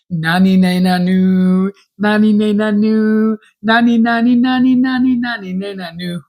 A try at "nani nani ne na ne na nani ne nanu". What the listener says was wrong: Wrong. It's nani nani ne na ne na nani ne nanu. You just went na na na na na na.